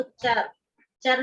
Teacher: चर में रा के बाद आ की आवाज आ रही है